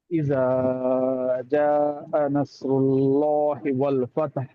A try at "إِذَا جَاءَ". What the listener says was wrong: ఇజా ఎక్కువ దీర్ఘం లాగారు. జా తక్కువ లాగారు. ఇజా 2 హరకాతులు, జా 4-5 హరకాతులు. ఫస్ట్ చదివినప్పుడు కూడా ఇది తప్పు చేశారు.